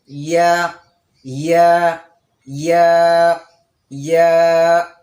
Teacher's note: জিহ্বার মধ্যখান, জিহ্বার মধ্যখান তারা বরাবর উপরে তালুর সঙ্গে লাগবে। ইয়া উচ্চারণের সময় জিহ্বার মধ্যখানটা গিয়ে তালুতে লাগবে।